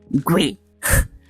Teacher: It's a G sound like G, but you're rounding your lips to get gwe